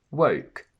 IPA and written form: wəʊk (WOKE)